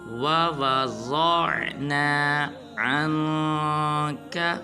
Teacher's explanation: بعض مسلمان پڑھ دیتے ہیں وَوْضَعْنَا، یا بعض پڑھ دیتے ہیں وَوَضَعْنَا، یہ بالکل غلط ہے۔ واو کو لمبا ہرگز نہیں کرنا بلکہ ضاد کو پر ادا کرنا ہے۔ پڑھیں گے وَوَضَعْنَا عَنْكَ۔